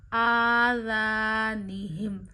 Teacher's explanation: الف مدہ کریے، الف کو ایک انگلی جتنا کھینچیے